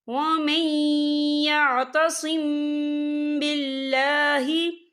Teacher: یہ دیکھیں ومن یعتصم، یہاں میم ساکن ہے، میم ساکن کے بعد جو ہے با آ رہا ہے، تو یہاں پر اکفا شفوی ہوگا، اور ہم یہاں غنہ بھی کریں گے، اور غنے کی مقدار جو ہے 2 سے 3 سیکنڈ ہوگی۔